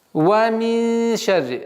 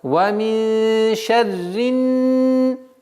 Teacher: Назализация в размере двух огласовок, мягкое произношение ша, ра, но здесь с огласовки кесра мы перепрыгиваем на нун.